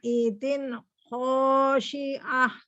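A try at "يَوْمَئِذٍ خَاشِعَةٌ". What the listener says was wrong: Zin putus lagi nih, tanwinnya bunyi nun itu nggak boleh putus-putus ya. Yauma idzin zin sempurna. Ya, jadi jangan jadi tebel-tebel, nun itu nggak boleh tebel soalnya. Pertama, nun nggak boleh diputus-putus, ya. Tapi hati-hati nih ya, ini pertama tanwinnya nggak boleh jadi dengung, jadi tebal.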